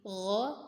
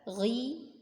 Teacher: Kemudian di sini ada ghain ya, ini gha tebal, ghi tebalnya berkurang ya karena kasrah